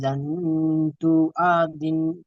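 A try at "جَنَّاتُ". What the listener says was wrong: জান্নাতু, এখানে গুন্না করেন। নুন তাসদিদ আছে। জান্নাতু। নুন টান দেন, খাড়া জবর আছে।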